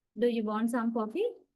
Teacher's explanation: When I say this, you can listen very clearly. At the end of the question, my pitch level goes gradually up. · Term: long rising intonation